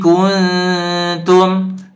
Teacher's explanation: dibaca dengung ikhfa haqiki ya disamarkan